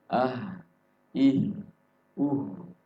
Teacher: Memang ketika kita melafalkan ih, itu memang bergetar di dada, tapi bukan di situ keluarnya. Ya, keluarnya ada di pangkal tenggorokan